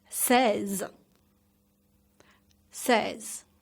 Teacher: emphasize on the first syllable on se, and then slightly say the final sounds z.